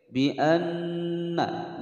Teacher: nun bertasydid ditekan ditahan selama dua ketukan